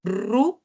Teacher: cuando nosotros decimos ru, la lengua está pegada al paladar, pero está atrás también, ¿no? Está hacia atrás. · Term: alta y es una posterior